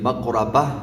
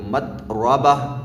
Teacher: گول تا یہ اینڈ میں ہا کے اندر تبدیل ہو جاتی ہے